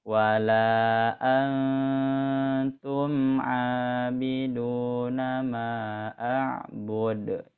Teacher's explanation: di lafaz antumnya ditahan Bu ya, soalnya nun sukun bertemu huruf ikhfa ya